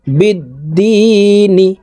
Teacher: বিদ্দি নুন জের নি বিদ্দিনি নুনকে ওয়াকফুর ক্ষেত্রে সাকিন করে ফেলবো এখানে দি তিন আলিফ টেনে নুনকে সাকিন করতে হবে কারণ মদের হরফের বামের হরফে ওয়াকফ হইলে মধ্যে আরজি তিন আলিফ